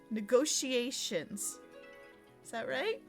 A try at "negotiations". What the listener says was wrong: Not an S. Negotiations. S-H. Negotiations. Not negotiations. Negotiations.